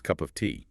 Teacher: The P sound at the end of cup can kind of blend into the vowel sound of of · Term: connected speech